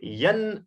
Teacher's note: یعنی بغیر گنہ کے ہم یہاں نون ساکن کو ظاہر کر کے پڑھیں گے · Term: اظہار